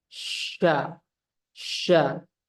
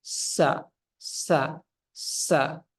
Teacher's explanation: sifatnya yang dimiliki oleh huruf syin saja tafasi sya sya ya tafasyi itu angin menyebar jadi kerasa di dalam mulut itu angin tersebar ada rasa-rasa Dinginnya di dalam Sya Sya ah kalau kita hilangkan